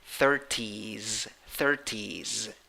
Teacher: e with a hat that means e strong a long e even though it finishes in s when you write it the pronunciation finishes in z